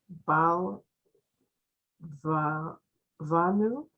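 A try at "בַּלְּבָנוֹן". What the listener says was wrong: There's a O, not a U. The nun, nun, O, nun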